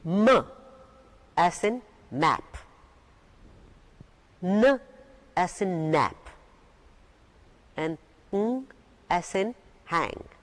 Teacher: Now we've got three nasal sounds that are produced through the nose.